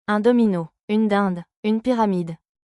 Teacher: Le D est une consonne occlusive orale sonore. Elle se produit en bloquant brièvement l'air avec la langue contre les alvéoles, juste derrière les dents, puis en le relâchant. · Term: consonne D